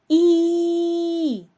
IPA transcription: і